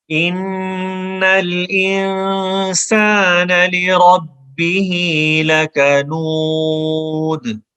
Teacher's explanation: یہ بریک کاف ہے اور اس کے بعد دال پہ کلکلا ہے. دو پیش بھی ختم ہو جائیں گی وقف میں، تو لکنودن کو ہم لکنود پڑھیں گے